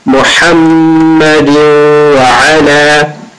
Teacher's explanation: Ha and Ayn come from mid of the throat.